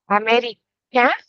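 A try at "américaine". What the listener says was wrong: American. You would say it American with the e. if Hussein were to say it, for example, he would say Americain. American because there is no e at the end of a masculine nationality.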